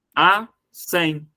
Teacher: essa palavra tem duas sílabas e das duas sílabas que ela tem a última é mais forte ou seja ela é uma oxítona e toda